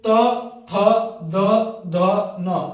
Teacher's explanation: चल फिर त, थ, द, ध, न, इसका अगर उच्चारण कर रहे हो तो आपका जीभ जो है वो दांत को टच कर रहा है, दांत के पीछे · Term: दंत व्यंजन